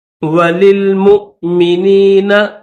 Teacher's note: میم کو حمزہ کے ساتھ ملا کر پڑھیں گے اور تھوڑا سا جھٹکا لگا کر پڑھیں گے